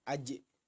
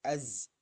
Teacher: Az bukan aj tapi az, lidahnya disejajarkan saja.